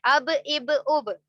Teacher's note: ہونٹوں کے گیلے حصے سے، دونوں جو گیلے ہیں تر حصے ہیں، ویٹ پارٹس ہیں، تو وہاں سے با ادا ہوتا ہے